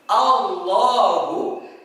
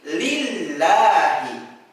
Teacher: Ada yang dibaca tebal seperti Allahu, ada juga yang dibaca tipis seperti lillahi.